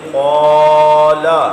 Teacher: قا مستعلیہ ہے، قا کے ساتھ آپ نے الف کو بھی پر کر دینا ہے